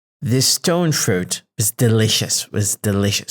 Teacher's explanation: I'm tilting the scale to delicious because it carries more content meaning. So it carries more linguistic value.